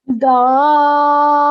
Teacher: It's a mad kabir, but when you're joining this letter to the lam, you're not going to say dollan. You're going to elongate the sound for good 4 to 6 seconds and then join it to the lam.